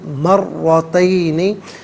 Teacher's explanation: را پر زبر، را کو پر کر کے پڑھیں گے، مشدد بھی ہے، جماؤ کے ساتھ پڑھیں گے